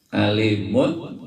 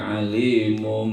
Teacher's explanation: Karena tanwin menghadapi huruf ba, maka suara tanwin berubah jadi mim. Yang tadinya alimun jadi alimum. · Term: iklab